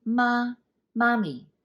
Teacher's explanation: mommy mommy it would all be mom mommy right but no in cantonese it has to be the high tone